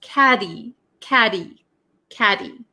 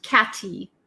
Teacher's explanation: And you might notice that caddy in American English, the tt um sometimes is referred to as a flap t. So, it doesn't sound like a hard t sound. Okay? It's like a d almost.